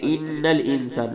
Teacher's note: انسان میں نون پہ غنہ ہوگا